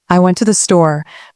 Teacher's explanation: in the sentence, I went to the store, the stressed words are went and store. The other words like I and to the are softer and quicker. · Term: sentence stress